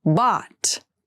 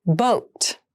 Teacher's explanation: bot has the more open Sound and boat has the more closed sound